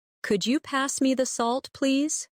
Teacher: Listen to the way my voice rises on could you and falls gently at the end.